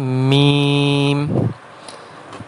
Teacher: میم جو ہے با کی طرح دونوں ہونٹوں سے ادا ہوتا ہے، لیکن فرق یہ ہے کہ با جو ہے یہ ہونٹوں کے گیلے حصے سے ادا ہوتا ہے، یعنی ہونٹوں کے تر حصے سے ادا ہوتا ہے، اور جبکہ میم جو ہے یہ دونوں ہونٹوں کے خشک حصے سے ادا ہوتا ہے۔